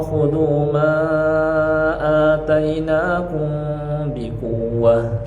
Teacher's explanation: ada mad namanya mad munfasil. Ya, panjangnya 4 atau 5 harokat. Maka dibaca agak sedikit panjang.